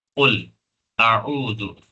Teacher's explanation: تو قل، اعوذ، حمزہ اور عین کو فرق کرنا ہے، حمزہ کو نارمل اور عین کو تھوڑا سا حلق کے درمیانی والے حصے تک لے جانا ہے